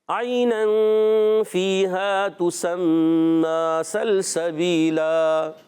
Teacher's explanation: دو زبر کی تنوین کو الف سے بدل دیتے ہیں، اس کو کہتے ہیں وقف بالابدال مع الالف